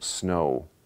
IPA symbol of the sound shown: oʊ